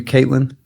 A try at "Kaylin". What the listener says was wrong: T is silent. It's actually not even there.